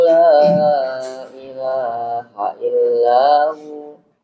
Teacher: Di kalimat la ilaha illahu ila 2 harokat aja, nggak boleh lebih dari 2 harokat.